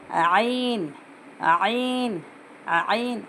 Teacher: आइन की आवाज़ को अच्छे से निकालना, अंदर से हलक में से निकालना। आइन आइन आइन, हा की आवाज़ पहले हवा बाहर निकलना, उसके बाद हा की आवाज़ आना, हा हा हा, ये आइन की आवाज़ आइन आइन आइन।